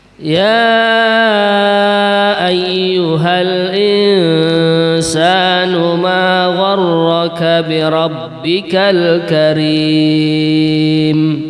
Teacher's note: bacaannya namanya mad jaiz munfasil, karena ya itu kalimat sendiri, ayyuha hamzahnya pada kalimat yang lain. Sama di dalam qiraahnya Imam Hafaz ini dibaca 4 harokat